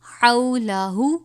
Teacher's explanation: حولہ باریک ہا ہے، حلق سے پڑھا جائے گا